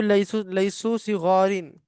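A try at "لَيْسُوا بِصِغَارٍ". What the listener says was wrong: लैसु बिसगारिन, बा भी है, बा देख के पढ़िए।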